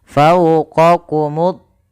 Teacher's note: yaitu alif lam yang kita tuliskan tapi alamnya tidak dibaca sehingga huruf lamnya diidgamkan ke huruf th sehingga thnya berharakat tasydid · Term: alif lam syamsiyah